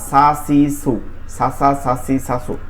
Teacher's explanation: জিহ্বার আগা সামনের নিচে দুই দাঁতের আগার সঙ্গে লাগাই হবে